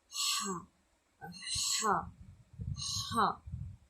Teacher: குரல் நடுத்தொண்டையிலிருந்து அழுத்தமாக ஒலிக்க வேண்டும்.